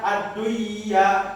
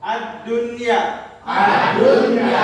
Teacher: Nah, nunnya dibaca jelas tidak dibaca idam. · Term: idhar